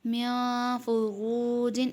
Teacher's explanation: نون ساکن کے بعد فا ہے، فا بھی حروف اخفا میں سے ہے، اس میں بھی غنہ کر کے پڑھیں گے